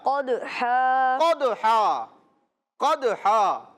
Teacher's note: तो कलकला करेंगे यानी कि आवाज लौटती हुई मालूम होगी